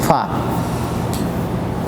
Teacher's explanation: اوپر کا دانتوں کا کنارہ نیچے کے ہونٹ سے مل کر فا ادا ہوگا